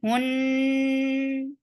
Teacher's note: You're circling your lips for ha, but as you will touch noon, your lips should be in a straight position.